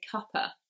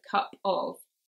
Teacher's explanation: there we've lost the off sound and we've lost the v sound and that's just become a schwa